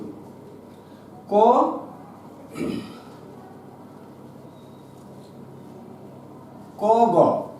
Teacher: বর্গের প্রথম এবং তৃতীয়। ক, গ এই দুটো উচ্চারণের সময় অল্প শ্বাস লাগে, তাই এই দুটোকে আমরা বলছি অল্প প্রাণ।